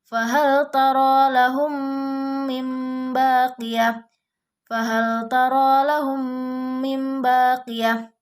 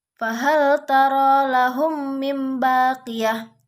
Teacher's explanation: mim mati bertemu dengan mim. Didengungkan dan ditahan 2 ketukan. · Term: idgham syafawi